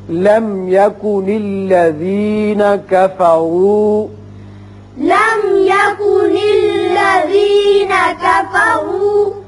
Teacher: لم میم ساکن کے بعد یا ہے، یہاں میم کا اظہار ہوگا